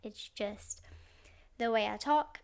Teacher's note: I'm sorry in advance for my vocal fry that you can obviously hear.